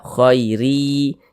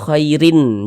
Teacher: Bunyi tanwinnya dimasukkan ke huruf ya. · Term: idgham bi gunnah